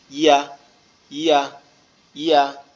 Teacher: ইয়া হচ্ছে আমাদের জিহ্বার মধ্যকান উপরের তালুর সঙ্গে লাগবে, লেগে উচ্চারিত হবে একটু শক্ত আওয়াজে, ইয়া ইয়া ইয়া।